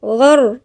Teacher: الغاين هنا مفخمة من الحروف المفخمة، غر، والراء مفخمة لأن الراء ساكنة وقبلها مفتوح